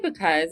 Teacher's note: because what they say is they say cuz and that's because we actually strongly accent the back end the second syllable